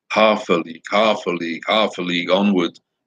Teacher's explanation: dactylic meter with its stressed, unstressed, unstressed syllable